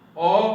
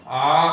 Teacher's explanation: जैसे उड़िया में ओ आ ह्रस्व ई दीर्घ ई इस प्रकार हम बोलते हैं, परंतु हिंदी में बोलते समय ओ आ यानी ओ को बोलने में जितना समय लगता है, आ को बोलने में उससे ज़्यादा समय, दोगुना समय लगना चाहिए, इसलिए कि ओ और ओ दोनों मिलकर आ बनता है।